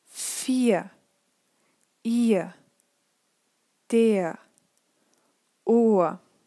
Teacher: although you read an R, it's really important that you don't pronounce it.